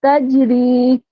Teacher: जब हम इसका वफ करते हैं ना तो हम इसको तीन अलिफ की मकदार खींचते हुए रोकते हैं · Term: हरूफ मद्दा